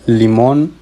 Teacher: la sílaba tónica se encuentran al final de la palabra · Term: palabras agudas